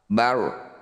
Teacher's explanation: Ini disebut bacaan ra tafkhim, ra yang harus dibaca tebal. Caranya angkat ujung lidah ya sampai menempel di langit-langit lisan. Intinya jangan banyak getaran ketika baca ra tebal atau ra tafkhim.